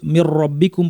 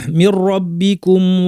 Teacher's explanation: সহ একটা গুন্না ছাড়া র এবং লামের ক্ষেত্রে গুন্না ছাড়া ইদগাম হবে অর্থাৎ কমপ্লিটলি যুক্ত হয়ে যাবে দুইটা অর্থাৎ নুনের কোন অস্তিত্ব থাকবে না